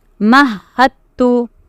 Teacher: Both are two different letters with the same articulation point. So you will totally combine the dal into the ta. So it is mahattu. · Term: idgham mutajanisan